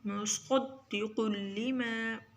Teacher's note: صاد کو بھی موٹا پڑھیں گے اور قاف کو بھی